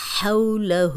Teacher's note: ہا حروف حلقی ہے، اس کو آپ حلق کی طرف، حلق سے نکالیں